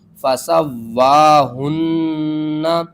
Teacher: ہا کو آپ نے حلق کے سب سے نیچے والے حصے سے ادا کرنا ہے، آواز بھاری آئے گی